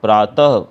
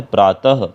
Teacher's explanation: विसर्ग मतलब अह। विसर्ग का प्रयोग उच्चारण के समय व्यंजन के साथ ह की ध्वनि देता है। अह, ह का साउंड अगर हमें चाहिए व्यंजन के साथ, तो हम डबल डॉट लगाते हैं।